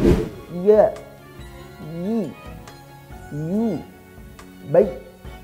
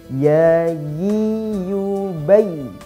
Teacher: huruf ya-nya kurang merenggang sedikit lidahnya sehingga terlalu menekan